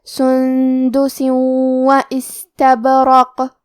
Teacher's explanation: سین حروف الہمز میں سے ہے اور ہمز کا معنی ہے کہ حرف کی آواز ایسے کمزور ہو کہ اس میں پستی پائی جائے